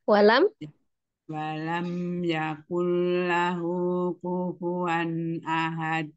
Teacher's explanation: terus dibacanya dipantulkan karena dia di akhir maka qolqala Kubro